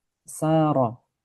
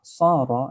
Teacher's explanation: Antara sin dengan shad tempat keluarnya sama. Yang membedakan hanyalah shad itu tebal sehingga suaranya menjadi sha.